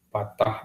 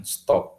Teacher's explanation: Stop, P yang di depan itu berbeda dengan P yang di belakang. Karena P yang di depan itu letup ya, hambat tetapi letup, sementara P yang di belakang itu tidak letup alias implosif ya. Yang di depan eksplosif, yang di belakang implosif.